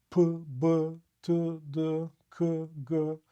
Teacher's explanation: you have a flow of air that suddenly stops when you say it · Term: plosive